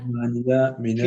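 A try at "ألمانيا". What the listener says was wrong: എല്ലാത്തിനും അല്ലുണ്ട്. അൽമാനിയക്ക് അല്ലുണ്ട് കേട്ടോ. ഇവിടെ അൽമാനിയ അൽ ബിന്തിന്റെ അല്ലെങ്കിൽ അൽ ബൈത്തിന്റെ അല്ലല്ല, അൽമാനിയയിലുള്ള അല്ലാണ്. അപ്പൊ അൽമാനിയ ഫി അൽമാനിയ മിൻ അൽമാനിയ ഇല അൽമാനിയ.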